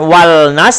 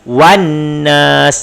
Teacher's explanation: Tandanya ialah huruf ketiga setelah lam ada sabdu, kemudian alif lam ada pada ada pada tulisan tapi tak ada dalam bacaan. Dia ada lam tapi dalam bacaan bukan wal nas tapi wan nas. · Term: alif lam syamsiyah